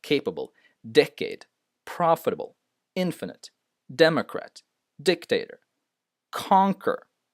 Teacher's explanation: all of these words the first syllable is stressed